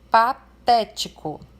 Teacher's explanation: Nós temos aqui uma polissílaba, uma palavra com 4 sílabas. E a sílaba té ali é a sílaba acentuada e é a antepenúltima da palavra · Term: proparoxítona